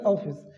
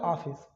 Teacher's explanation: अगर मैं ये हटा दू तो क्या होगा आ फिस तो इसके लिए मुंह बहुत ज्यादा खुलेगा आ के लिए